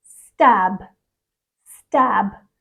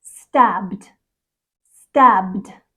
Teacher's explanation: the word stab ends in a voiced B sound